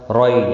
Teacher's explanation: یا لین ہے، تھوڑا نرمی کے ساتھ کھینچ کر ادا کریں گے